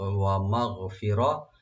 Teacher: গাইনে কলকলা করবেন না, শুধু রাইট দিবেন, মিম ওপেন থাকবে। ফি বলবেন, রা ডিপ হবে।